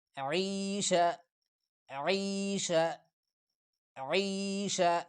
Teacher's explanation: عین گلے سے نکالتے ہیں، گلے پہ تھوڑا زور لگا کے